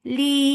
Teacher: Because of this work, we are giving temporary sukoon here. This temporary sukoon has turned these 2 counts long vowel into 4. This is madarid للسكون.